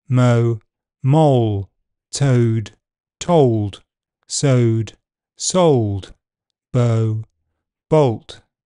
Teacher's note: before dark l the starting position is back open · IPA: [ɒʊɫ]